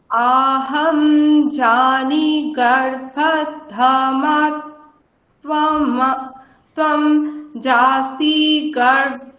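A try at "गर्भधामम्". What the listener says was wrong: ধমম নয়, ধম্ম, ঠিক আছে।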